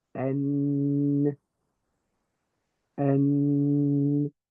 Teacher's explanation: The other component of the letter is the and that is the nasal vibration that is to that is when your the bridge of your nose sort of vibrates a little bit to add a sort of humming sound